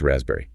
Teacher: that S often sounds more like a Z and the P, completely silent